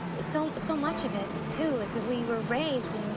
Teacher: she spoke above her vocal cords and used a kind of breathy speech to create the sense that her voice was ‘bodiless’